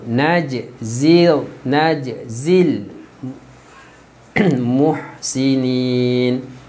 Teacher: jim berada pada tengah kalimah, qalqalah yang lembut.